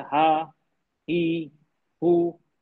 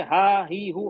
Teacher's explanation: जैसे कि आप हवा छोड़ रहे हैं बिना किसी रुकावट के